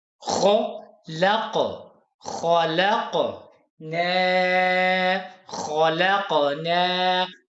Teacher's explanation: نا نہیں پڑھنا، ناک میں آواز آپ کے، یہ ناک میں آواز نہیں جائے گی، نا نہیں پڑھنا